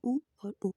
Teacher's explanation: उ और उ, जिन्हें हम होंठों से उच्चारण करते हैं, जिन्हें ओष्ठ्य वर्ग में रखा गया है।